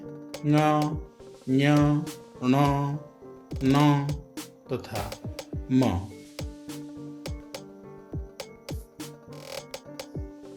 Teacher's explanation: क वर्ग से प वर्ग तक सभी वर्गों के अंतिम वर्ण को अनुनासिक कहते हैं, क्योंकि इनका उच्चारण करने के लिए श्वास को अंशतः नासिका से बाहर निकालना पड़ता है। ये वर्ण हैं ङ, ञ, ण, न तथा म।